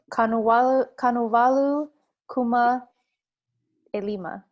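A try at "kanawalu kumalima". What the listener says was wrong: yeah, you don't need the A. Good.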